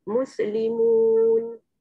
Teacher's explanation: Pada huruf sin sukun ada Sofir dan Hamas. Ya, Hamas angin, Sofir bunyi dia tu, bunyi desir dia tu ya.